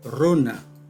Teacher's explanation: El fonema vibrante múltiple R tiene varias realizaciones. Como vibrante múltiple alveolar, es la realización general o estándar.